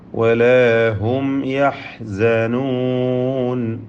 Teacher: സാക്കിനത്തായ മീമിനെ ഇൽഹാർ ഷഫവി നൽകി മണിക്കാതെ വെളിവാക്കുക